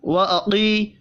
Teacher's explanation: قاف کو پر پڑھنا ہے ، یا مدہ کو ایک الف کے برابر کھینچ کر پڑھیں